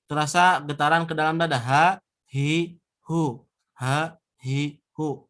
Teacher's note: yang terpenting ha mah terasa getaran ke dalam dada